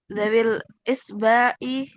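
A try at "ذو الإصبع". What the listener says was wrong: Dul, bacanya bukan dawi. Dul isba'i.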